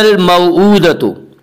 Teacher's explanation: الف کو نہ پڑھا جائے گا، صرف لام کو پڑھیں گے۔ وَإِذَا الْمَوْءُودَةُ، وَإِذَا الْمَوْءُودَةُ، واولین وہ واو جو ساکن ہو اور اس سے پہلے زبر ہو، واولین کو نرم آواز کے ساتھ پڑھیں گے۔ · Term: حروف قمری